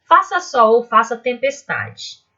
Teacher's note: Nesse verso eu tenho a primeira sílaba tônica na palavra faça, a sílaba tônica é fá, sol é um monossílabo tônico, faça de novo, e tempestade, essa é a sílaba tônica, tá?